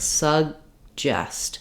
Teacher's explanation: I'm still lifting my tongue for the G sound making that air stop · I'm not saying suggest with a big break in between. What happens is that this first G sound is unreleased. So it sounds like suggest.